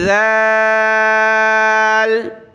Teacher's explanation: سا کی طرح اس میں بھی زبان کی نوک دانتوں سے باہر نکال کر نرمی کے ساتھ ادا کرنا ہے